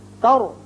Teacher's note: تر را پر کریں گے اس لیے کہ را ساکن ہے لیکن پہلے زبر ہے